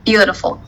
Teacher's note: the stress mark in the word beautiful occurs in the first syllable